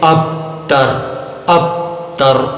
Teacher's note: آپ سن رہے ہیں کہ حرف با کی آواز یوں دب جاتی ہے کہ پتہ ہی نہیں چلتا کہ حمزہ اور تا کے بیچ میں کون سا حرف تھا